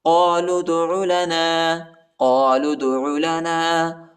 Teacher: دال کو جھٹکے کے ساتھ پڑھیں گے، دال حروف قلقلہ کا حرف ہے۔